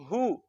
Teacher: होंठों को गोल करेंगे और पेश आ जाने की वजह से हा को लंबा नहीं करेंगे